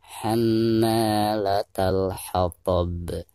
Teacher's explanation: Nah, ada huruf qalqalah di ujung bacaan ini, maka itu cara membacanya harus dipantulkan, bahkan dengan suara pantulan yang lebih keras karena dihukumi qalqalah kubro